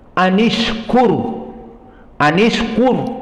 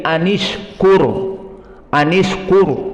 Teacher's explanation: maka ra di sini pun mufakhamah karena ra sakinah qur, dan sebelumnya dhammah di kaf.